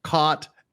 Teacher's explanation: caught like you caught me and the cot you sleep on are pronounced exactly the same